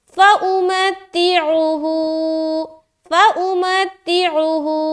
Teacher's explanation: اس میں صرف اور صرف کھینچنا ہا میں ہے، ایک الف کے برابر، کیونکہ یہاں پر الٹا پیش ہے، اور الٹا پیش کس کے برابر ہوتا ہے؟